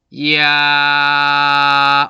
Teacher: 발음이 되면서 이제 입이 벌어지는 거를 여러분들이 느낄 수 있을 텐데 이게 왜 이러냐면 야 같은 경우는요 실제로는 모음 이와 모음 아가 결합된 형태예요. 그래서 맨 처음에는 이를 발음하는 모양으로 가요. · 이를 발음하다가 아로 넘어가는 사이에 야가 나는 거죠. 그러니까 해석을 하면 이야가 되는 거죠.